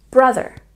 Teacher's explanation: Don't forget to emphasize the first syllable in brother